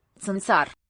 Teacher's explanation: if you slow down how quickly you withdraw your tongue there from the T position, tsa, it develops this s in between